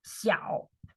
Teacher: third tone so you go down first and then you go up